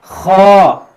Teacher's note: خا جو ہے یہ حروف مستعلیہ ہے, اس کو ہمیں موٹا پڑھنا ہے, ہمیں اس کو باریک نہیں پڑھنا